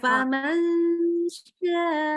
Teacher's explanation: Niatnya bilangnya huruf n ya, jangan eng.